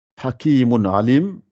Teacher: Donc il y a le Ain qui suit un Tanwin. Hakimun Alim, il ne faut pas faire de liaison entre les deux. Contrairement à ce qu'on fait avec le Idram. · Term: Idhar